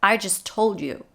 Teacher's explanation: we have i and then just where the t is dropped at the end of just we know this already but also it would be dropped anyway